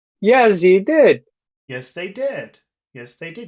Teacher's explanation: You go up at the end, actually.